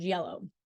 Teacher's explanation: The sound is made by producing the Y sound. The middle part of the tongue is raised toward the hard palate, creating a narrow passage for airflow without a complete closure. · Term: palatal glide